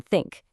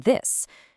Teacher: Sometimes it's just a soft puff of air, like in think. Other times it vibrates, it buzzes, like in this.